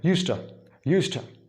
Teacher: the same voiced consonant Z turns into S. Why? Because T sound influences the preceding sound Z.